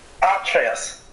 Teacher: If we're using Germanic phonetics, even though Atreus is clearly a Latin name, it would be Atreus, with the stress on the first syllable